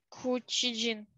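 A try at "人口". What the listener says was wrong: Наоборот, джин-ко.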